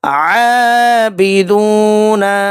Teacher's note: عابدون، عین کو 1 الف کے برابر کھینچ کر حلق سے ادا کرنا ہے، واو ساکن اور اس سے پہلے پیش ہے، یہاں پہ واو مدہ کا قاعدہ اپلائی ہوگا، 1 الف کے برابر کھینچ کر ادا کرنا ہے۔